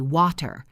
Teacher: In British English, it is often a clear T, water.